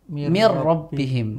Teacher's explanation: huruf nun itu benar-benar seperti hilang dan masuk ke huruf ro · itu seolah-olah menjadi huruf ro yang dobel kan nunnya kan seperti hilang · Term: idgham Kamil, idgham kamil